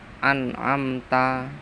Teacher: Nomor 4, an'amta, bacaan idhar syafawi jelas, mem mati bertemu ta